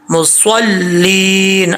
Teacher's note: صاد کو فل موت پڑھنا ہے، حروف مستعلیہ میں سے ہے، مصلین۔ اب اس کو مصلین نہیں پڑھنا، لام کے نیچے زیر ہے، مصلین یا مدہ ہے، ایک الف کی مقدار لمبا کیا جائے گا۔